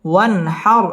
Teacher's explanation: ওয়ান হার, ওয়ান এটা হচ্ছে ইজহার, নুন সাকিনের বামে হা আসছে, হা ইজহারের হরফ, গুন্না ছাড়া স্পষ্ট করে পড়তে হবে। ওয়ান হার র পুর হবে এবং রয়ের মধ্যে ওয়াকফ করতে হবে।